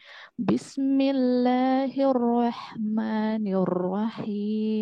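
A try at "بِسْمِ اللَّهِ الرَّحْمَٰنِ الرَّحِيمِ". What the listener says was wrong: Baik, kalau huruf sin qalqalah enggak? Enggak. Huruf sin enggak qalqalah, ya. Jadi jangan bismillah.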